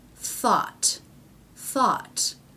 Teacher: we've switched back to an unvoiced th now we have the a vowel and a final T